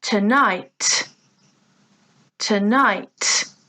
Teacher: Again, 2 syllables, tonight, but here the stress is on the second syllable. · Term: stressed syllable